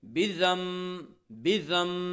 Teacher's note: سفارا۔ بذنبہم، بذنبہم، با زیر بی، ذال میم زبر ضم، بذم، نون ساکن کے بعد با ہے اس لیے نون ساکن کو میم سے بدل کر غنہ اور اخفاء کے ساتھ پڑھیں گے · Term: اقلاب